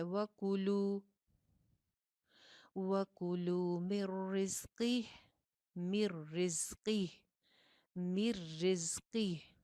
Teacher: काफ मोटा है, जा के अंदर सीटी है